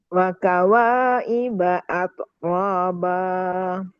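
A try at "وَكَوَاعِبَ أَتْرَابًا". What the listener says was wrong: Hamesnya keluarin.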